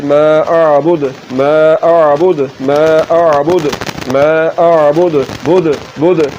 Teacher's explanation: پھر یہ بغیر جھٹکے کے اعبد، ایسے نہیں پڑھنا اعبد اعبد، جھٹکے کے ساتھ پڑھنا ہے، پھر ہی دال میں جو صفت قلقلہ ہے وہ ادا ہوگی · پر وقف کریں گے تو یہ ساکن ہو جائے گی اور دال حروف قلقلہ میں سے ہے تو پھر یہاں پر قلقلہ ہوگا اور اس کو جھٹکے کے ساتھ پڑھیں گے